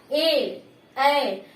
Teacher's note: कंठ के साथ साथ तालु पर भी जोर जा रहा है